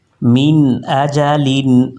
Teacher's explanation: من اجل، ہم نے یہاں پہ غنہ نہیں کیا۔ نون ساکن کے بعد الف آیا ہے، الف حروف حلقی میں سے ہے، یہاں پہ اظہار ہوگا یعنی غنہ نہیں کریں گے۔